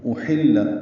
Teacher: حمزہ اقصی حلق سے واضح طور پر ادا کرنا ہے، ہا وسط حلق سے ادا کرنا ہے اور لام سے ملانا ہے۔